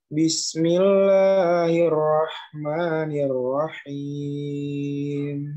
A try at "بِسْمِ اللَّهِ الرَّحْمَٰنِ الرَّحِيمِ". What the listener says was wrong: La-nya tipisin. Bismillahir la, jangan la. Bismillah.